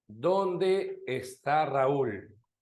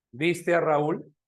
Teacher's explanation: Descendente, porque es una pregunta abierta